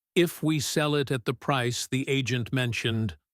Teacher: If you could see that sentence drawn as a line on a page, it would probably rise gently through the first half. If we sell it at the price the agent mentioned, almost floating, uncertain, and then come down more firmly on she'd have enough, landing, settling, becoming solid.